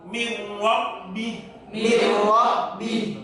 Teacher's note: caranya membaca roh yang tafkhim, mengangkat bibir yang bawah ke atas. Min, jangan mil, beda.